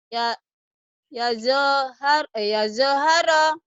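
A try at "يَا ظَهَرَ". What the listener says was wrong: Gak ada yang panjang.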